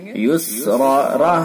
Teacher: فإن مع العسر يسرا. را کو پر کریں گے اور را کے ساتھ الف کو بھی پر کریں گے